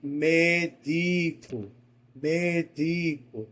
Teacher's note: eu tenho duas sílabas átonas e a tônica no meio